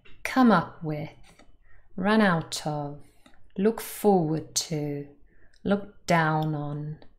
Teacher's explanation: now usually we stress the first particle